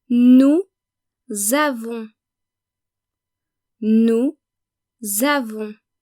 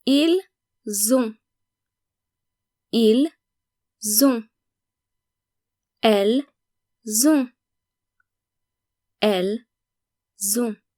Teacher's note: Notice that you need to pronounce the N of on and the S of nous, vous, il, and elle when conjugating the verb avoir, because when conjugated, the verb avoir starts with a vowel. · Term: making the liaison